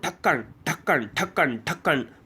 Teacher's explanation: बहुत झटके के साथ जब जीव नीचे आती है तालू को छूते हुए वही उत्क्षिप्त व्यंजन है